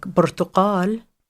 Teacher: The stress is going to be on the final syllable because that's how the system works.